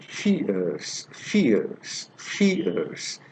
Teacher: this diphthong begins with e and glides to uh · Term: centering diphthongs